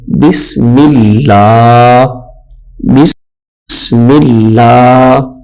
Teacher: اس میں جلالت اللہ کے لام کو باریک کر کے پڑھیں گے. جیسے یہ اس میں جلالت اللہ، اس سے پہلے میم کے نیچے زیر ہے، تو یہاں پہ اس میں جلالت اللہ کے لام کو باریک کر کے پڑھنا ہے.